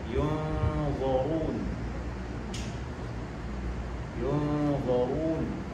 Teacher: ra berbaris dammah, ra berbaris di hadapan juga dibaca dengan tafkhim tebal.